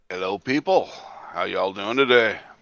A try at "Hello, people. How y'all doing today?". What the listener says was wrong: Jesus Christ. Make it sound like you're happy to see them.